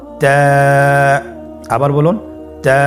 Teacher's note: তা হরফটি বারিক হরফ এবং এক আলিফ টেনে পড়তে হবে।